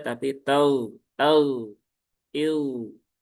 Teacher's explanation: huruf gin tidak punya sifat qalqalah. Dia juga termasuk huruf istila, huruf tebal. Maka pastikan dia juga ketika dalam kondisi sukun ya, terlebih ketika sebelumnya ada harakat fathah maka ee sukunnya menebal ya.